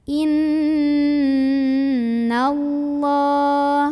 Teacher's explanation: saja qoola Inna ada ghunnah musyaddadah karena ada Nun yang bertasydid maka cara membunyikannya adalah didengungkan dulu ya ditahan dulu sampai bergetar halus ke hidung